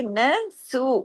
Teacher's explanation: सीन वाव पेश सु दो हरकात क्योंकि वाऊ मद्दा है